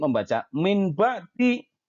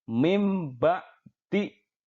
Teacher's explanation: tidak boleh lagi membaca mint babi itu salah yang betul adalah Nun matinya kita ganti dengan huruf mim sehingga kita baca mimba Dik nah itu baru betul saya ulang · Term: iqlab